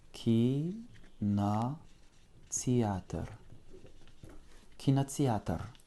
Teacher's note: Avec un accent tonique sur le A qui va réduire toutes les autres voyelles. Le I reste I, le O devient presque un A, le Y devient presque un I.